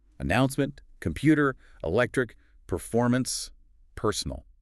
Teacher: The word personal is the only one stressed on the very first syllable. The others are stressed on the second. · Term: word stress